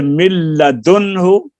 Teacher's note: इसमें नाक में जरा भी आवाज नहीं जाती, खालिस लाम की तरह पढ़ते हैं, और इसको इदगाम बिला गुन्ना कहते हैं।